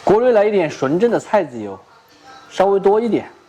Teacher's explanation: 这里的一点也都是没有儿化音的